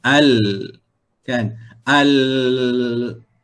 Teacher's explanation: tertahan di bahagian gusi dan mengalir di mana mengalir di bahagian tepi tepi lidah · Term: bainiyah